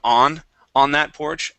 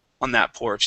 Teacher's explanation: it takes more time to say on than un okay because your mouth has to open a little wider to pronounce the a sound